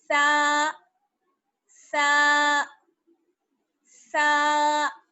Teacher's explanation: ہلکی سی زبان بہت معمولی سی آپ کی باہر کو نکلے گی، اور زبان کی نوک جو ہے وہ آپ کے اوپر والے دانتوں سے ٹچ ہو جائے گی ہلکی سی